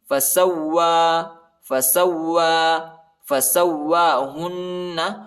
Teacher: ہا کو نون کے ساتھ ملائیں گے اور غنہ کرنا ہے